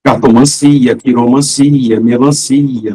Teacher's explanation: Tudo que termina em ancia tem a sílaba tônica si.